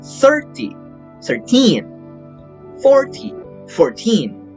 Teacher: Numbers ending in teen show a rhythmic shift in stress from the first syllable to the last to distinguish clearly between 30, 13, right?